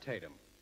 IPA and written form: ˈteɪtəm (Tatum)